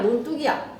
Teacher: 사이소리 현상이야. 논이라는 명사와 뚝이라는 명사가 만나서 논뚝이라고 된소리로 발음이 나는 사이소리 현상